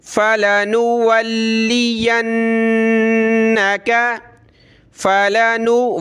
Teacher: لام کو ہم نے سخت کرنا ہے تشدید کی وجہ سے۔ فَلَنُو، واو لام زبر ول، لام ذیلی ولی، فَلَنُوَلِّيَنَّكَ، فَلَنُوَلِّيَنَّكَ قِبْلَةً، قاف با زیر قب، با حروف قلقلہ میں سے ہے، قب۔